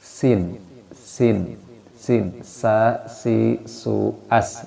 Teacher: Sin sama masih bagian lisan, torful lisan, ujung lidah, akan tapi sin lidah kita ke bawah ya.